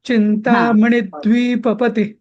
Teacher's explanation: चिंतामणी मणी दीर्घ नाहीये